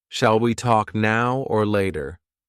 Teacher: now the or got connected to the word after it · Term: linked